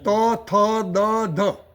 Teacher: દંત્ય જે કીધા ને, દંત્ય એટલે સમજો કે લુ પછી તું એટલે ત વર્ગના બધા જ આવી ગયા. એટલે ત, થ, દ, ધ બધા બોલીએ તો દાંતને જીભ અડવી જોઈએ